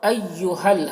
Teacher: ایہل ہا کو لام سے ملا کر پڑھیں گے